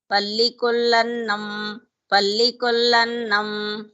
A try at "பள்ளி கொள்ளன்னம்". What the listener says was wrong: that la should be pronounced with a stress. பள்ளி கொள்ளன்னம்